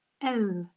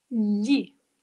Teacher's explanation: When I say the letter L, I put the tip of my tongue to the tip of my palate. L. And the top and the bottom teeth are apart. L. When I pronounce the sound Y, similarly, I put the tip of my tongue to the top of my palate.